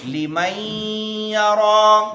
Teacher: نون ادغام ہو جائے گا، مدغم ہو جائے گا، یا میں داخل ہو جائے گا